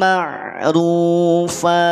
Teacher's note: Huruf ro harokat domah, ketika domah berarti dia tafkhim. Ketika huruf ro tafkhim, maka jangan sampai huruf ain terbawa tafkhim, terbawa tebal.